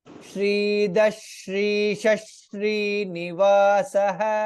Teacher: In all the three words, Visarga is followed by Shakara, hence it is Shridah Shrisha Srinivasah.